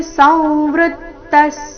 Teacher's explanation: ವಿಸರ್ಗದ ಉಚ್ಚಾರಣೆ ಅರ್ಧ ಸ ರೀತಿ